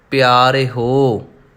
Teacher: ਜੇ ਪਿਆਰਿਓ ਕਵਾਂਗੇ ਤਾਂ ਊੜੇ ਨੂੰ ਹੋੜਾ ਲੱਗੇਗਾ, ਹਾਹੇ ਦੀ ਆਵਾਜ਼ ਨਹੀਂ ਨਿਕਲੇਗੀ